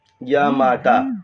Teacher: य ह्रस्व, मा दीर्घ और ता भी दीर्घ है